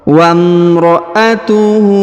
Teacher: huruf hu dipanjangkan dua harakat karena di atasnya terdapat tanda harakat u terbalik